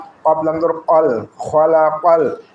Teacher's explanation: কফকে আমরা কলকলা হিসেবে উচ্চারণ করবো। জিহ্বার গোড়া তার বরাবর উপরে তালের সঙ্গে লাগাই উচ্চারিত হয় কফ।